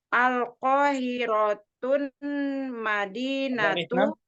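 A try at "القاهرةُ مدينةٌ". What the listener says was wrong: Ada alif lam, nggak boleh tanwin. Madinatun. enggak boleh ada tanwin karena ada alif lam.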